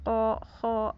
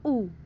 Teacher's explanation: nggak monyong, hanya bulat saja dalam mengucapkannya, bulat o gitu. Kalau monyong kan u ya kan gitu.